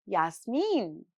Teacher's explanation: Yasmin is stressed on the final syllable, unlike the English stress pattern